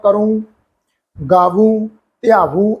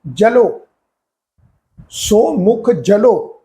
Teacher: ਜਿੱਥੇ first person ਦੀ ਗੱਲ ਹੋਏਗੀ ਉਥੇ ਅਸੀਂ ਨਾਸਕੀ ਟੋਨ ਵਿੱਚ ਸ਼ਬਦਾਂ ਦਾ ਉਚਾਰਨ ਕਰਦੇ ਆਂ